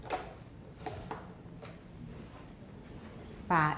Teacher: It's unaspirated. An unaspirated, unvoiced, or voiceless initial stop bilabial.